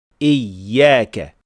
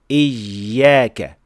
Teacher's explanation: جب زبان کے درمیانی حصے کو بہت زیادہ اوپر اٹھا لیا جائے، جس سے راستہ بہت تنگ ہو جاتا ہے اور یا جیسی آواز پیدا ہو جاتی ہے۔ حل یہ ہے کہ زبان کے درمیانی حصے کو اتنا ہی اٹھائیں جتنا یا کی تشدید اور درست نبر کے لیے ضروری ہو، لیکن اتنا نہیں کہ سانس کی ہوا رک جائے یا آواز بدل جائے۔